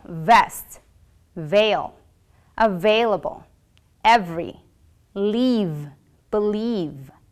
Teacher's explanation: produced by putting your upper teeth on your bottom lip and blowing air but this time your vocal folds will vibrate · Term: labial Dental sound